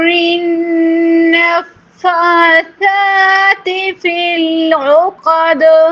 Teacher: څنګه چې تاسو نننې مخرج د ثا وي، نو من شر النفاثات یعنی نفاسات به نه وایو، ځکه چې ثا بیا په سین سره بدلیږي